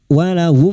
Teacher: Izhar syafawi. Mim sukun dibaca jelas tanpa mendengung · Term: idhar syafawi